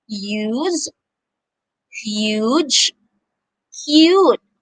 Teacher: the long u sound can sound like you